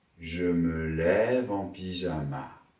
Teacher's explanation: Notez au passage l'enchaînement consonantique. Le V de lève appartient au syntagme intonatif suivant.